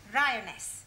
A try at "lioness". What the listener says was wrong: No, L. You're not saying it right. Try saying lioness. Well, in future, every time you see an L, pretend it's an R, right?